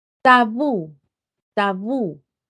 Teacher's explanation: Tabú, tabú. Recae en la última sílaba la mayor fuerza de voz. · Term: aguda